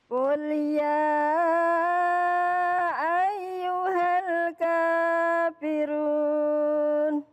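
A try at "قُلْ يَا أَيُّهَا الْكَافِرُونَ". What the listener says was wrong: Kaknya jangan panjang-panjang. Kafirun gitu.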